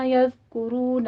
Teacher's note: یذکرون میں بھی ذال کے اوپر سیٹی کی آواز نہیں آنی چاہیے ، کاف کو ضمہ ہے، ہونٹ گول کر کے ادا کرنا